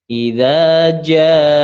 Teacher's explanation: ja-nya itu dibaca mad 4 harokat karena setelah huruf mad ada hamzah